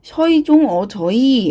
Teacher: 이가 반모음 이가 뒤에 오는 하향 이중모음이었다라고 말을 합니다